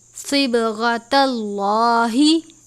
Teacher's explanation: صاد کو پر پڑھا جاتا ہے، با پہ کلکلا کرتے ہیں